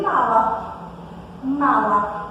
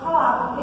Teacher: Vejam que esse M, ele não tem, a gente quase não o pronuncia, ele perde um pouco do peso dele. Vejam que ele não tem o mesmo peso de mala. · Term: semivogal